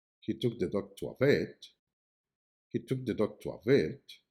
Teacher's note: The word vet carries the main emphasis as it is the most important information in the message.